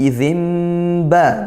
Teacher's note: Berikutnya di ayat 12, izimba, nun sukun bertemu ba, yaqlab ya, dibaca dengung juga yaqlab ya. Nun sukun yang awalnya bunyi nun bertemu ba maka berbunyi mim,